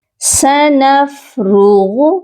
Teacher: را کو بھی موٹا پڑھیں گے، غین کو بھی موٹا کر کے پڑھیں گے